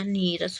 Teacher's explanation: कह रहा है कि यदि विसर्ग के बाद रा हो तो विसर्ग जो है वो क्या हो जाएगा लुप्त हो जाएगा और उसके पहले का स्वर जो विसर्ग के पहले स्वर लगा हुआ है वो दीर्घ हो जाता है